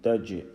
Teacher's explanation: وَعَمِلُوا الصَّالِحَاتِ أَنَّ لَهُمْ جَنَّاتٍ تجري. Jim, we are making the echo sound in Jim